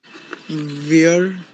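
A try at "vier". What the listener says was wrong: वियर नहीं है, फियर, फियर und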